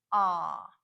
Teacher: the description short o in American English makes the sound a this is a very open Sound the jaw is dropped the tongue is flat and we produce the sound in the back of the throat